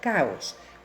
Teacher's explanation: dos vocales abiertas no forman diptongo sino hiato